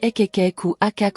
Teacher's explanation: Une série de petits claquements rapides de la langue contre le palais sec et répété qui ressemblent à de petits ekek ou akac enchaîné. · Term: chirpe ou gazouillin